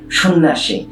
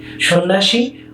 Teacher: দেখো উদাহরণটি, সন্ন্যাসী, নয় নয় যুক্ত ব্যঞ্জন জফলা আকার। এই জফলার কারণে আগে অকারান্ত শয়ের ওকার উচ্চারিত হয়েছে, কিন্তু এই দুটো ন এখানে দুটো কেবল নয় থেকে গেছে, আর কিছু হয়নি।